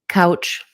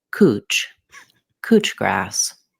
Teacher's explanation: In Australia, they pronounce this cooch grass. Instead of ow, they use oo, cooch. Cooch grass.